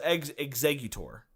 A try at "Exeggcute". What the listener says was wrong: Okay, well, you're adding an extra syllable in that one. You said execute. Yeah, no, there isn't a C. It's just EXEGGUTOR.